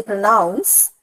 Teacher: the word noun gets an extra bit of force while I utter it · the center part of the word, pronounce, noun, that is more audible because I utter it with somewhat more force. So such a portion or such a part, yes, such a part in a word which is uttered with somewhat more force or prominence that part is called the stressed syllable.